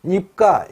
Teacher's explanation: 음절 끝소리에서 음절말이라는 조건에서 받침 피읍이나 순경음 비읍은 받침 비읍과 같이 발음한다. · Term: 평파음화